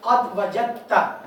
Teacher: تو دال پڑھنے میں نہیں آئے گی, لکھنے میں آئے گی. ہم جیم کو ڈائریکٹ تا کے ساتھ اٹیچ کر دیں گے